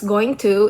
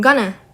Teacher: the t sounds blend and the phrase becomes shorter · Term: assimilation